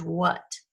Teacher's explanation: it's got the schwa sound that sounds like a short u